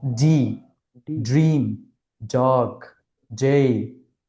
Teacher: ডি, এটা হচ্ছে voice sound, এটাকে বাংলাতে বলা হয় ঘুষধ্বনি। অর্থাৎ আপনি যখন ডিটা উচ্চারণ করবেন তখন আপনার যে স্বরতন্ত্রী আছে, অর্থাৎ গলার যে মধ্য জায়গাটা আছে, এটা একটু কেঁপে উঠবে।